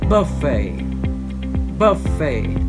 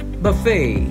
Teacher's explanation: in british english the word would be pronounced buffet buffet with stress on the first syllable in american english the word would be stressed on the second